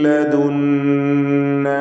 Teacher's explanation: ലദുന്ന നൂൻ മുശദ്ദദയെ മണിക്കണം.